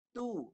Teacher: Tu jangan bunyi kat hidung, jangan sengaukan.